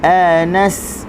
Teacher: Anas huruf sin hujung lidah berada di gusi.